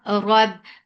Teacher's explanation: Rab, ra is heavy for fatha upon jaws, attached ba, ba will get sifa of shidda, that sound will cut off abruptly